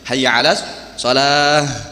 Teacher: hayya 'alas shalah harus ada ha itu di dada makhrajnya